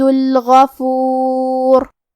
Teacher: کلمت الغفور میں حرف الغین کی ادائیگی حلق کے اوپر والی حصے سے ہے. غین حروف تفخیم میں سے ہے تو ہم یہ حرف کو موٹی آواز میں پڑھیں گے